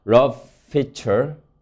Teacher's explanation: F 발음이 두 개 연속으로 나서 하나의 장음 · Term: 장음화